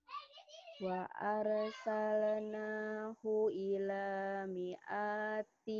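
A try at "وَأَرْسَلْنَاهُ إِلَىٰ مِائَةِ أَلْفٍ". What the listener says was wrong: Pendek mi'atinya. Ila mi'ati alfin. Pendek ya itu, enggak panjang. mi'ati. Hu-nya juga pendek. Wa arsalnahu ila gitu.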